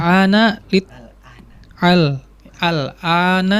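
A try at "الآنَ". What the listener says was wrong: Al-ana itu biasa saja ya. Tidak perlu difasih-fasihkan al-an, silakan enggak ya. Ya, al-an itu pakainya hamzah ya. Al-an.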